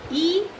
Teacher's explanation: The front of the tongue is raised in the direction of the hard palate while producing E sound.